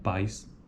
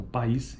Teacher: pais é um ditongo como uma vogal e um Glide uma semivogal em oposição uma sequência de vogais na segunda palavra então país é apenas uma sequência de vogais país veja que